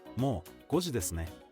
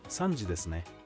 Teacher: ne with a rising intonation, which can be used to request confirmation